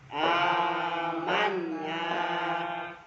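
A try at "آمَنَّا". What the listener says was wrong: Nunnya agak di dulu. Gunnah ya. Amanna.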